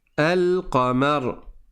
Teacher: Donc là je prononce le lem. Pourquoi ? Parce que la lettre d'après, elle est lunaire.